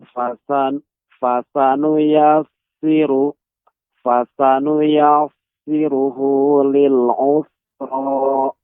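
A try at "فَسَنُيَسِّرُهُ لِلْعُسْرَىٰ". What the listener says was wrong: Ya, ketika tadi pengucapan ya, Pak, ketika membaca fasanuyassiruhu tidak tebal, tidak. Fasanuyassiruhu lil yusra. Fasanuyassiruhu lil usra.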